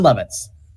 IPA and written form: ˈloʊvɪts (Lovitz)